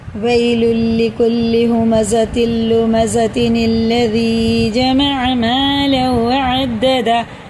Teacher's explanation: ادغام میں واو ہے کیونکہ تنوین کے بعد واو پہ شد ہے تو یہ اسے غنہ کر کے پڑھنا